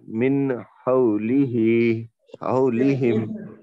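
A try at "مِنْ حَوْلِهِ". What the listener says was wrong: एक मिनट, यहाँ पे फिर आवाज जाहिर करिए आप, जाहिर नहीं हुई आवाज। मिन बोले तो लाग में चले जा रही है ऑलरेडी, उन्हें उसको जाने ही नहीं देना अपन।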